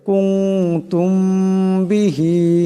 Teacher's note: এক পরিমাণ গুন্না হবে কুতুম এমন করে তুম এখানে মিম সাকিন মিম সাকিনের পরে বা আসছে এখানে মিম সাকিনকে ইকফার গুন্না করিয়া পড়তে হবে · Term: ইকফার গুণনা